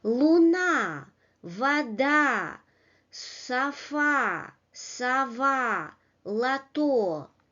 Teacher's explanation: another model where the stressed syllable is the second syllable. Луна, вода, софа, сова, лото.